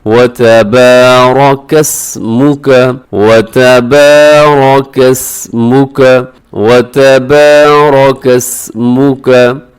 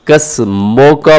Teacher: वतबारकस्मुका, कसमो का पढ़ना दुरुस्त नहीं है, मीम पेश मुंह होता है, मीम पेश मो नहीं होता।